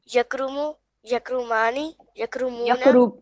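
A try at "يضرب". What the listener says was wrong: यकरुबु, यकरुबु। आप यकरुमु पढ़ रहे हो। यकरुमु।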